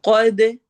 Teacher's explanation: قوف کو ہیوی کرنا ہے، دال پہ قلقلہ کرنا ہے